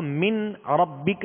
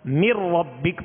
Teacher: نون کو را میں ملا دیں گے، نون کو را میں داخل کر دیں گے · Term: ادغام